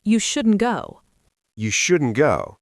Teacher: instead of saying you shouldn't go with a sharp T, we often stop the air in our throat. It's called a glottal stop. Or we just blend it into the next word.